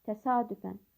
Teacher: yəni vurğu A saitinin üzərindədir